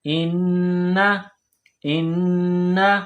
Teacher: نون مشدد ہے تو حمزہ کو نون کے ساتھ ملائیں گے تشدید کی وجہ سے، اور نون مشدد پر غنہ کریں گے